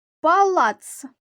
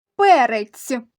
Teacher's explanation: палац останній звук твердий ц перець останній звук м'який